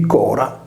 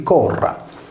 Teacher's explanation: un'unica consonante, come nel nostro caso la /R/, riproduceva il suono debole [ɾ] di Cora e quello forte [r] di Corra